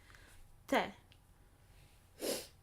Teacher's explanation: Softening it by adding contact with my tongue at the back of my teeth, the back of my front teeth. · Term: soft t